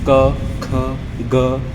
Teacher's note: उच्चारण का स्थान एक तो कंठ, कंठ से होता है, जैसे क ख ग, ये गले से जो साउंड निकलती है।